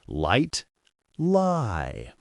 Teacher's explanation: The tip of the tongue touches the alveolar ridge. The sides of the tongue are lowered. Air flows along the sides like water flowing around a rock. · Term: Pure L